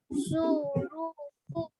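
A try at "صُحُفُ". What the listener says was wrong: जी जल्दी जल्दी बोलिए, सुहुफु। रू नहीं बेटा, हु, हा, सुहुफु।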